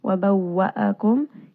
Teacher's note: here we have a waw with a shadda. Make sure that you are reading this twice. Wa bawwa'akum, and make sure you are rounding the lips on this letter as well.